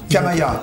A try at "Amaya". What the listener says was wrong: C'est donc Amaya, c'était la liaison en fait.